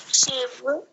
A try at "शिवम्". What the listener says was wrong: शिवम, बिंदी है, शिवम ठीक है, ठीक है, जहाँ पे भी बिंदी की वहां मौ की आवाज, जैसे स्वागतम इयम शिवम।